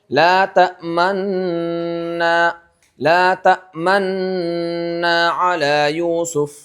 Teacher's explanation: गुना करते होठों को गोल करते हुए जाना है। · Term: इस्माम